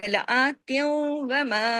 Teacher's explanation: اب دیکھیں اوپر کھڑی زبر ہے، تا دو زیر تین کی تنوین ختم ہو گئی اور واؤ میں ادغام ہو گیا